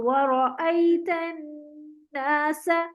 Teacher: नून पे दो हरकत का गुन्ना करेंगे , और 2 हरकत इसको लंबा भी करना है, तो वरा